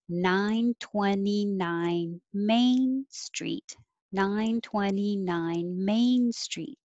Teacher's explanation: when you read an address start with the numbers high and step down and then go back up for the name of the street